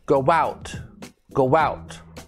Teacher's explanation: is go out go out we say go out go out sounds like we're putting a w in between the two o's